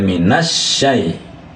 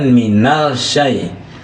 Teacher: bunyi lam sukunnya itu ya tidak dijelaskan, tidak seperti lam qamariah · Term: dilebur